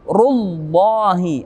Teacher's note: ada kalimat Allah yang sebelumnya ada dhammah atau fathah, maka berubah menjadi tebal.